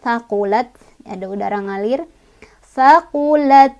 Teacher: Jadi huruf hamas ketika sukun lebih kelihatan ya, ada udaranya. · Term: sifat hamas